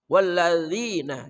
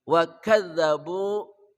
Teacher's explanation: Walladzina, zal ya, ujung lidah bersama ujung gigi seri atas